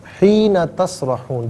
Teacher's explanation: حین میں نون کو کھینچیں گے نہیں